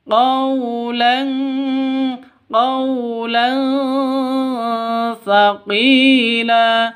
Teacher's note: Tanwin bertemu dengan sa, samar didengungkan, siap-siap ke huruf sa-nya karena ikhfa hakiki.